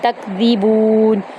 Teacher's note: الا, یہاں پر پھر الا پڑھیں گے, الا نہیں پڑھیں گے. تکذیبون, تا کو کاف کے اندر داخل کریں گے, کاف کو باریک پڑھیں گے, ری کو ہم آرام سے پڑھیں گے.